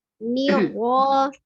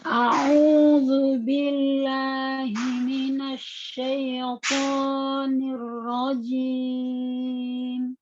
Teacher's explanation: Jadi ada dua rohnya satu sukun, satunya roh fathah. Nah, ro sukun dilihat ketika sebelumnya kasrah maka dia tipis saja. Jadi pas nirnya tipis, kemudian pas fathah ro maka dia tebal ya. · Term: dibedakan tipis dan tebalnya